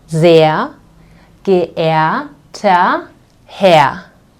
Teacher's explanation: So this R, this R, this R, and these two R's will be pronounced like A, okay? The German A, okay?